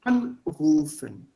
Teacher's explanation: Das haben wir gelernt. So in any separable verb, the accent will be here at the first, on the first thing, on the prefix